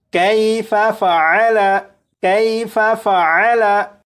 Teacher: या लीन को बग़ैर खींचे बग़ैर झटका दिए नरमी से मारूफ पढ़ते हैं, लिहाजा ये जो काफ है इसे खींच कर नहीं पढ़ेंगे बल्कि बग़ैर खींचे पढ़ेंगे।